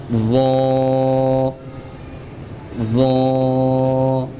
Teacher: وا کو ہم نرمی کے ساتھ پڑھیں گے موٹا کر کے اور 1 الف کے برابر کھینچ کر۔